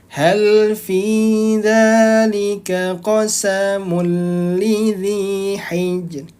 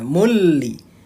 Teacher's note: idgham bila gunnah dia dibacanya tidak ditahan, tidak didengungkan juga.